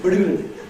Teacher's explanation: put the stress in this very unexpected place, at the very beginning of the word, and on an unstressable syllable